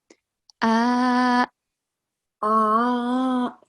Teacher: Hamza, the sound comes from bottom of the throat. Okay, and it has a slight jerking sound.